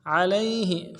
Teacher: عین کو موٹا ادا کرنا ہے، لام کو یا کے ساتھ ملانا ہے، یا لین ہے، بغیر کھینچے پڑیں گے، ہا کو نرم سے ادا کریں گے.